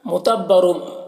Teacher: را کے اوپر 2 پیش کی تنوین ہے، را کو پر پڑھیں گے۔